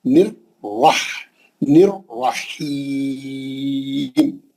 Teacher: نر کا پہلا را پتلا ہے، ہاں دوسرا را موٹا ہے، کیونکہ تجدید والے را میں دو را ہے.